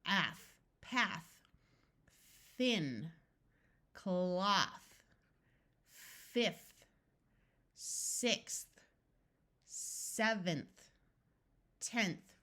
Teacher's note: Notice that these number words use the unvoiced sound of th.